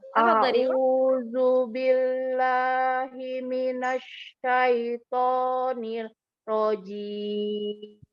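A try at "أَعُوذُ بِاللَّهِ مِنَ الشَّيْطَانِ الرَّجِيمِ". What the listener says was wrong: Coba hamzahnya ditahqiq lagi Umi, dijelaskan.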